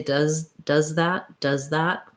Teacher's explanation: my tongue for the z is behind my teeth and my voice is on and then it just needs to move forward enough to be · we have to go from the z sound of does to the th sound of that